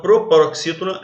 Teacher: Porque a sílaba tônica é a antepenúltima.